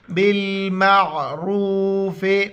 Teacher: रा को मोटा करके वा के साथ मिलाएंगे